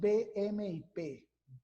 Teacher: En esta zona de articulación intervienen el labio superior e inferior. Allí se pronuncian, ¿verdad?, los fonos B, M y P. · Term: bilabial